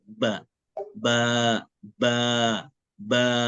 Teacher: maka bibir atas dan bibir bawah ini saling menyatu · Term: huruf ba